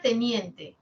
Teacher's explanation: tiene la media anterior la alta anterior y en general son anteriores